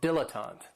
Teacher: this word has 3 syllables, and there's kind of like a stress on that first and last syllable